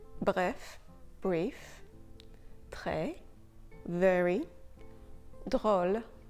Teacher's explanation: When the letter R is linked with another consonant, it sounds and feels a little bit harsher. The R will sound a little bit harsher, it will be a little bit longer, and the R will not be a voice sound, so your voice box will not be activated.